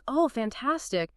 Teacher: If you say something like, "Oh, fantastic." But you say it in a really flat tone or maybe with just a tiny slow rise, it doesn't sound fantastic at all. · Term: sarcasm